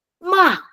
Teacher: it starts from high again, ma, and then going down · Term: fourth tone